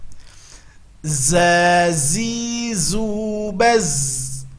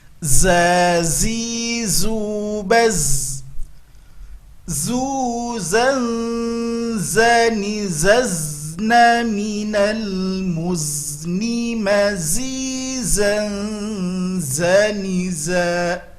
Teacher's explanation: Kalau tadi harus keluar ujung lidah, sekarang tidak. Ujung lidah nempelnya ke gusi bawah dan kedua gigi ditautkan. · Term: huruf za